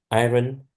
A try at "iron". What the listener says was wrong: Iron. It's not pronounced like it's spelled iron. No, iron. Yeah, iron.